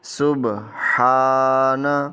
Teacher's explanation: مثلا ہا، تو ہا کی ادائیگی کرتے ہوئے سانس کی آواز دینی ہے، اور اس ہا کے اوپر کھڑا زبر ہے، اس کو ایک الف کے برابر لمبا کر کے پڑھیں گے۔